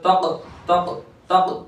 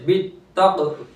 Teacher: हुर्फ कलकला साकिन होते हैं तो आवाज लौट कर वापस आती है फौरन